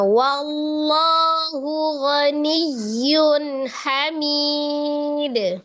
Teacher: Allah dibaca tebal karena sebelumnya fathah sebelum lafuz jalalah huruf berharakat fathah